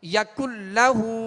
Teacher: یَکُلَّهُ، اب نون لام سے مل گیا، نون ساکن کے بعد لام ہے لہٰذا یہاں ادغام کریں گے مگر بلا غنہ، غننے کے ساتھ نہیں کریں گے